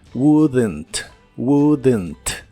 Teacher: no se pronuncia la o ni la l de esta palabra pero sí se le agrega un sonido como de e suave entre la d y la n